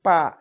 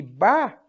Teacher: A única diferença fisiológica entre pá e bá é que numa as cordas sonoras, as cordas vocais vibram mais. As outras, as cordas vocais quase não vibram.